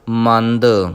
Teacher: ਇਹਨੂੰ ਭਾਰਾ ਨਹੀਂ ਕਰਨਾ, ਜੇ ਮੰਦ ਭਾਰਾ ਕਵਾਂਗੇ ਤੇ ਦੱਦੇ ਦੀ ਜਗ੍ਹਾ ਧੱਦਾ ਲੱਗ ਜਾਏਗਾ, ਇਸ ਕਰਕੇ ਇਹਨੂੰ ਪੋਲਾ ਕਰਕੇ ਪੜ੍ਹਨਾ ਹੈ